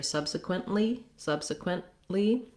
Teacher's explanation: stop the air and then release into the lee sound · make sure i do that stop t in that case subsequently i move my tongue to the t slash l position and then i release into the l